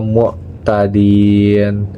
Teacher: dinnya di sana itu adalah izhar halki karena tanwin kasrah bertemu hamzah dan dibaca jelas